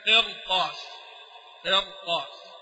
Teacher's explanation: استقوت لحرف الاستعلاء ففخمت حتى لورش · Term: التفخيم